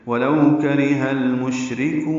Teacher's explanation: گے، ولو کرہ ال، لام ساکن ہے، اس پہ اظہار ہوگا، مشرکون میں شین ساکن ہے، اس پہ تفشی ہے، ہمس ہے · را باریک ہے، کاف بھی باریک ہے اور کاف کو لمبا کریں گے